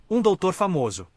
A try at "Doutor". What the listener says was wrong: Doutor. There's no B. Doutor.